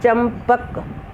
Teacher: जैसे चंपक शब्द है, अब चंपक, ये म की जो स्वर है अनुस्वार है वो म की आवाज़ है।